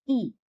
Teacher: अग्रस्वर के उच्चारण में जीभ का आगे का भाग सक्रिय रहता है।